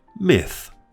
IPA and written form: mɪθ (myth)